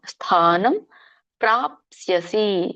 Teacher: ಇಲ್ಲಿ ಯಾಕೆ ಮ ಬರುತ್ತೆ ಯಾಕಂದ್ರೆ ಮುಂದೆ ಪ ವರ್ಗ ಇದೆ ಪ ವರ್ಗದ ಅನುನಾಸಿಕ ಮ